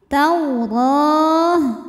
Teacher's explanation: Huruf ra dibunyikan secara tafkhim karena berbaris di atas yaitu baris fathah, maka dibacanya tebal.